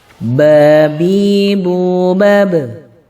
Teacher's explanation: Huruf mim, ba ini keluar dari dua bibir yang dirapatkan. Ma, ba. Ya, cara membacanya seperti itu, dirapatkan dua bibirnya.